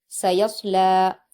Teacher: یا کو صاد سے ملا کر پڑھیں گے، صاد کو پر بھی پڑھیں گے